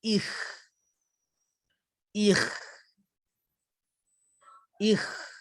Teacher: Keluar dari hujung kerongkong kita akan tekankan sedikit. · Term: makhraj halqi kha